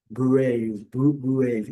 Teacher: A gente tem a palavra bravo em português, mas em inglês esse R recebe uma tonalidade diferente, uma entonação diferente. Eles chamam de R retroflexo